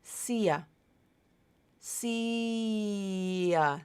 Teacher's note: see so I keep my vocal cords turned on see and just let that little Y sound connect the two vowels together